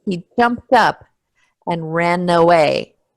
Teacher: remember that ED is going to be t, jumped up. So the T links onto the U.